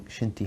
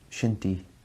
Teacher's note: all three so far one thing that kind of happens is whenever there's a sh sound it almost turns into a whistle